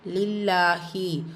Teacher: ஜூ வா மத்த இரண்டு ஹரக்க தளவு நீட்டம் கொடுக்கணும். லில்லாஹி அல்லாஹ்வுடைய லாமுக்கு முன்னாடி கெஸ்ரா வந்துருச்சு சோ இந்த அல்லாஹ்வுடைய லாம் மெல்லினமா ஓதணும். கூடவே அந்த அல்லா இருக்கறந்த சத்தாவையும் கொடுத்து ஓதணும்.